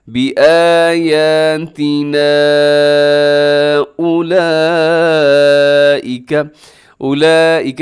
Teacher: اولئک اس میں بڑی مد ہوتی ہے جسے مد متصل کہا جاتا ہے، جس کا کرنا واجب ہوتا ہے.